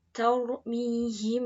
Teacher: Cara membacanya, yang pertama, suara mim mati disamarkan. Suara mim sukunnya dibaca samar antara mim dan ba, seraya mengeluarkan suara dengung di pangkal hidung. Yang kedua, suara huruf mim dan ba berada di bibir. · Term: ikhfa safawi